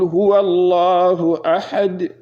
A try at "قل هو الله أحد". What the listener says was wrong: قل هو الله أحد قو. You have to say the qaf. Yeah, the qaf is a throat letter. You have to feel the throat, the Adam's apple.